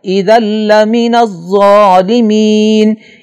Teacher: اذا لمن الظالمین لال کے اوپر تنوین ہے اور نون تنوین کے بعد لام آ رہا ہے لہذا اس نون تنوین کی آواز کو اس طرح لام کے آواز میں مکس کر کے پڑھیں گے کہ نون کی آواز ختم ہو جائے. اذا لمن الظالمین اور یہاں نون تنوین کی آواز کو ظاہر کر کے پڑھنا غلطی شمار ہوگا.